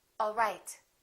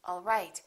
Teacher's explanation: One is falling intonation and one is rising intonation.